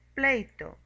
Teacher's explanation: Diptongos decrecientes. Se forma por la vocal abierta más una vocal cerrada.